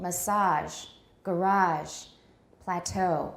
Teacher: we tend to stress french imports french loan words in american english on the final syllable